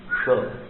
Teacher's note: श कहते समय एक छोटी सी सीटी निकल जाती है